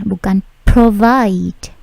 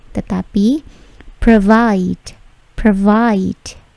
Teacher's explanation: Perhatikan bunyi plosifnya, P tidak terlalu besar